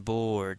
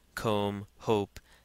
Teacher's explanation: now we have a long o as in board it's got a broad longer sound than comb hope